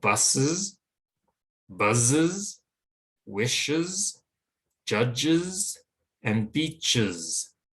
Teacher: we need to add a vowel sound before we add the Z sound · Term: extra vowel sound